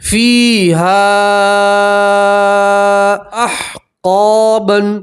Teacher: فیہا، فیہا، یہاں بھی یا مدہ ہے، اس لیے آپ ایک الف کے برابر کھینچ کر پڑھیں گے، ٹھیک ہے۔ اور یہاں مد منفصل ہے تو یہاں آپ 3 الف کے برابر کھینچ کر پڑھیں گے، ٹھیک ہے، حمزہ الگ کلمے میں۔